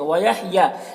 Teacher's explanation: یا میں کھڑا زبر ہے، اسے ایک الف کے برابر کھینچیں گے۔